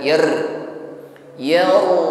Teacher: getaran pada huruf RO di sini tafkhim ditebalkan